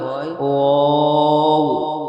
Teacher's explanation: দুই ঠোঁট না মিলিয়ে মাঝখান হইতে উচ্চারিত হয়।